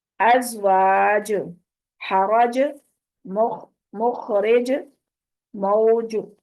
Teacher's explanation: تو ج پہ وقف کریں گے تو کلکلا ہوگا